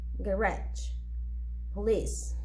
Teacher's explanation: is the first one subway traffic and in the second row the words are stressed in the second syllable